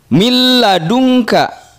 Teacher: nun sukun bertemu dengan lam bunyinya hilang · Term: Idgham bilagunnah